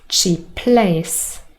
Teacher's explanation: there was only one consonant said even though we have two in the spelling